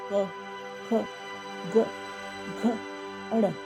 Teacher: तो के मीन्स कंठ, के वर्ग जैसे कि क, ख, ग, घ, अड़। क वर्ग की बात कर रहे हैं, इनका उच्चारण गले से होता है।